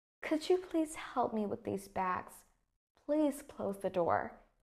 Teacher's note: It's like my voice tone decreases towards the end of the sentence. And that is the falling intonation.